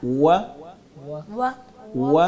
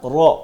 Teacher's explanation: व पे हमने होठों को गोल करना है। आगे र पे होठों को गोल नहीं करना है।